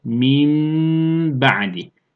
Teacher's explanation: Mime çevirecekti. Mim oldu. Ve de bunu 1-1,5 elif miktarı tutuyoruz ve gunne yapıyoruz. Min ba'di. Yani buradaki B harfi duruyor.